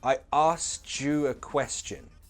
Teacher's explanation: we don't need that k sound in ask, and the T assimilates to the y in you. Chew. I asked you a question. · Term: connected speech